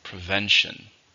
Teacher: how many syllables are in prevention three stressed in the second